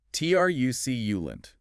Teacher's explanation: 3 syllables. Stress on the first.